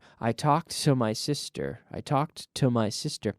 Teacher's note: Well, it sounds essentially the same. I mean, we do have sort of a longer T there